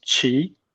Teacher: my name is actually the second tone. So it goes up.